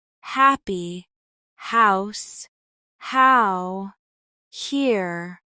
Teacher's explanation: In English, the H is a breathy sound made by pushing air through the mouth without vibration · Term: H sounds